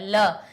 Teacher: देखिए टकराई ध्वनि की नहीं, ल बोलिए, कहां से टकराई, जीभ हमारी कहां टकराई, दांत से टकराई, यानी दंतव्य हो गया